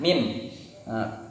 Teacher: Makhorijul huruf dari huruf mim tadi adalah intibaqus syafatain sama dengan huruf ba. Jadi ada di kedua bibir.